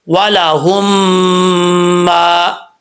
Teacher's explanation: ایک الف کی مقدار غنہ کریں گے، پھر اس کو لمبا کریں گے ایک الف کی مقدار میم کو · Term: ادغام مثلین